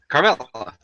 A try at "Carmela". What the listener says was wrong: Her name is how I like to pronounce it, since I'm Spanish, it's Carmela. You got to roll that R a little bit.